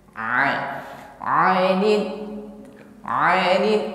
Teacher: Hati-hati mengucapkan huruf ain lunak saja, jangan kaku sebagaimana hamzah, bukan ani tetapi a.